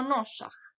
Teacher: U tom primjeru došlo je do glasovne promjene koja se zove jotacija. Glas j stopio se s glasom s i tako smo dobili glas š.